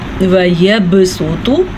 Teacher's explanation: با پہ کلکلا ہو رہا ہے